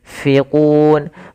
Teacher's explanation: Makhraj fa ada bibir gigi atas menempel dengan bawah. · Ini usahakan disamarkan nunnya kepada huruf fa. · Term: ikhfa